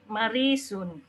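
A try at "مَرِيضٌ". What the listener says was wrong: Mana ada Marisun? Masa itu huruf shad, Om? Maridun, ya. Hati-hati, titiknya jangan dilewatkan.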